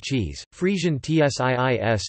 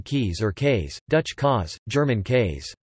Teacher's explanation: compare palatalized forms such as English cheese, Frisian tsiis to non-palatalized forms such as Low German keys or kays, Dutch kaas, German kays. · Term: palatalization of k